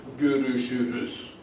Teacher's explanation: where everything is round and everything is front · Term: vowel harmony